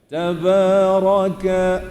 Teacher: Dia bukan muncung lah, jangan tabaro.